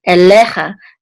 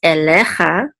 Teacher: This is an aleph with a tzere, which says and this is a lamed with a segol, and the yud together says ele, and this is a chaf sofit with a kamatz, which says cha, elecha, and the accent's on the middle syllable because of this trope mark right here.